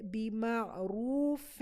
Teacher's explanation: اب یہاں دیکھیں بیما، آئین میں ان بٹوین ساؤنڈ دینا ہے. رو را موٹا ہوگا اور یہ واو مدیہ ہے، اس کو سٹریچ بھی کریں گے